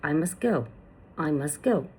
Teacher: the t sound in must may not be clearly pronounced in fast speech. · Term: Elision